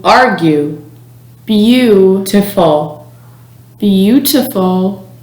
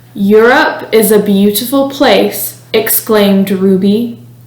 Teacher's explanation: the sound you is voiced meaning your vocal cords vibrate when producing the sound your tongue stays in the upper middle part of your mouth and your lips are rounded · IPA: /ju/